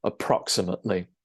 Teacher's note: you stress the second syllable there 'approximately'